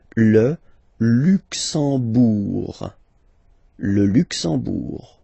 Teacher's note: You don't pronounce the M at all, it's this nasal en